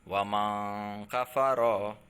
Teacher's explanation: ikhfa ini adalah nunnya mendengung atau samar-samar ya. Jadi tidak dibaca jelas nunnya, tetapi samar-samar ya.